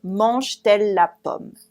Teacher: You don't hear it a lot. It's not a very loud T, but it's in the middle.